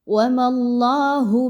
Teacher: میم کو اللہ کے حرف کے ساتھ ملائیں گے تو پر پڑھیں گے، باریک نہیں پڑھیں گے چونکہ میم کے اوپر زبر ہے